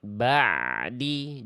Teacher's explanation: harusnya ain sukun itu sedikit mengalir